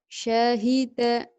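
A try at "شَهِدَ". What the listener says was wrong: Nggak ada yang panjang Ki.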